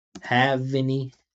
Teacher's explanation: Linking V to A.